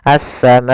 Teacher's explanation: Maka apabila ada hamzah datang setelah huruf mad dan hamzah tersebut berada dalam satu kata, maka dinamakan dengan mad wajib muttasil. Panjangnya adalah 4 harokat, maka kita panjangkan ma-nya 4 harokat.